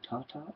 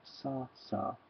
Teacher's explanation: when you go tata and when you go sasa your tongue is touching the same place in your mouth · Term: alveolar sounds